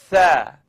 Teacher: it's the tip of my tongue coming up out at the edge of my top teeth. Now I'd just like you to simply blow the air between your tongue and your teeth.